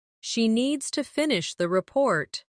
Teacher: She needs to finish the report. stress needs and report and let the small words fall quietly